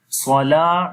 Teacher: lam we long due to alif madda